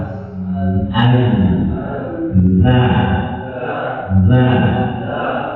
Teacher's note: sampai dibaca dengan Zaid Az Az ya tapi Az gimana punggung punggung lidah menyentuh ke gigi seri